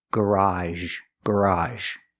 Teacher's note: We need this sound. It's like the sh sound sh but we make a voice sh. · The second pronunciation is AHZH in the word garage. It's an open sound, like hot and stop, plus the sound zh.